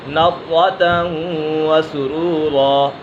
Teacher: ضاد پر حرف مستعلیہ میں سے اور را بھی پر ہے کیونکہ را کو زبر ہے